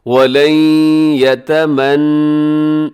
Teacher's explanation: یہاں نون ساکن کے بعد یا ہے، یا حرف یرملون میں شامل ہے، تو آپ یہاں پہ ادغام کیجئے گا